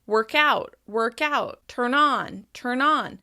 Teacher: As you can hear, it becomes really clear that the last consonant is linking to the vowel sound that follows it.